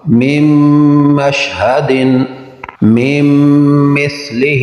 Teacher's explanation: نون ساکن کے بعد میم حروف یرملون ادغام غنہ کے ساتھ ہوگا